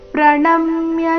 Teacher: ಪ್ರಣಮ್ಯ ನ ಮೇಲೆ ಆಘಾತ